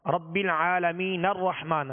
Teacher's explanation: ہم نے نون کو را سے ملا دیا، اب حمزہ کی ضرورت نہ پڑی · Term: حمزہ وصلی